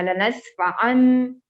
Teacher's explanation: تنوین کا sound change ہو جائے گا میم میں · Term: اقلاب